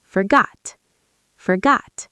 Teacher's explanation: Notice in American English that T at the end is often a stop T. · Your tongue stops the air, but you don't release it strongly.